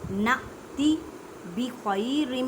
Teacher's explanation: या साकिन से पहले ज़बर या लीन का कायदा करें, मीन्स के नरमी से पढ़ें